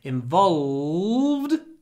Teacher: try to use dark l, the l in the back of our throat.